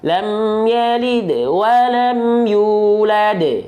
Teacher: Yalid itu dalnya dipantulkan dengan ringan. Yulad dipantulkan dengan kuat.